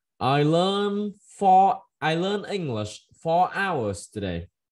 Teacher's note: Mình sẽ nhấn ở giữa câu nào và xuống ở cuối câu nhá